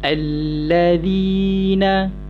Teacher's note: Ayat 3 alladzina, bacaan panjang. Zi tu hi, bunyi panjang hi tu adalah daripada makhraj al-jawf